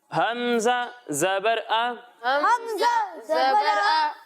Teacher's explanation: اور جب ہم حمزہ کی ادائیگی کریں گے تو اسے حلق کے نچلے حصے سے پڑھیں گے